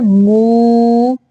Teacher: آواز جو ہے وہ ناک سے نہیں نکالنی، منہ سے نکالنی ہے